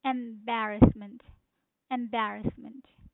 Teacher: the stress is on second syllable which is B.